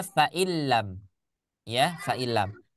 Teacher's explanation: Karena nun itu sudah masuk ke huruf lam. Dan untuk menegaskan huruf lamnya diberi tanda tasydid. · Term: idgham